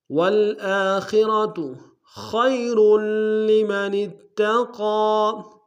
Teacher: آ میں خا کو موٹا را کو موٹا ادا کریں گے